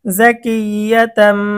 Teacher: যদিও তানভিনের উচ্চারণ হবে নুন সাকিনের মতো, কিন্তু এখানে ইকলাবের হরফ বা আসার কারণে এটা মিম দ্বারা পরিবর্তন হয়ে যাবে। তাম, তাম, তামিম দুই জবর তাম, জাকিয়াতাম।